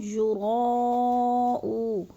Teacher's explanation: یراؤ پہ مد متصل ہے، 4 الفی مد ہے، 4 الف کے برابر اس کو ہم نے لمبا کرنا ہے